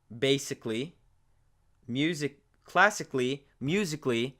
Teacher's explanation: anything that ends with a k sound and is followed by A-L-L-Y becomes a kli instead of kali. So this A ends up becoming silent in that case.